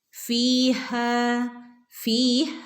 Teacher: യ മദ് ഉണ്ട് അല്ലേ അവിടെ നമ്മൾ രണ്ട് ഹറക്കത്ത് നീട്ടി കൊടുത്തിക്കണേ ഓതുമ്പോൾ